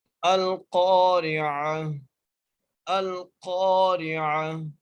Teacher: اس کے بعد را ہے، را کو بری کر کے پڑھ رہے ہیں کیونکہ را کے نیچے زیر ہے · اور قاف کو ہم موٹا کر کے پڑھ رہے ہیں۔ وہ اس لیے موٹا کر کے پڑھ رہے ہیں کیونکہ قاف موٹے حروف میں سے ہے اور ہم قاف کو 1 الف کی مقدار کھینچ کے پڑھ رہے ہیں۔ · حمزہ کو ہم لام سے ملا رہے ہیں۔ لام سے ملانے کا مقصد یہ ہے کہ کیونکہ لام کے اوپر جزم ہے، ٹھیک ہے، اور قاف کو ہم موٹا کر کے پڑھ رہے ہیں۔